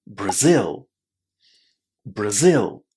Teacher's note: Did you notice how strong that stress on the second syllable is? Brazil. And then because it's the second syllable that's stressed, the first one is very, very short.